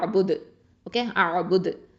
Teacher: அப்போனா வக்ஃபு பண்ணுறதுனால இது வந்து கல்கலத்தல் குப்ரா. ஓகேவா? அப்போ நல்லா அசைச்சு ஓதணும்.